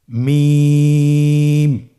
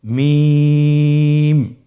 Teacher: হরফটি উচ্চারিত হয় দুই ঠোট চেপে ধরে · 2 ঠোঁট চেপে ধরে আমরা উচ্চারণ করব মিম